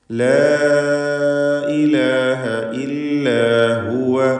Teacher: എന്ന് പറയരുത് ലാ ഇലാഹ ഇതിലുള്ള അലിഫിന്റെ ദീർഘം മദ് മുൻഫസിൽ ജായിസ് എന്നതാണ് നാലോ അഞ്ചോ ഹറക്കത്തിന്റെ അളവിൽ അലിഫിനെ ദീർഘിപ്പിക്കുക